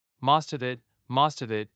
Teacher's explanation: So instead of most of it, each were said separately, it becomes most of it. Like one long word with no breaks in between. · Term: linking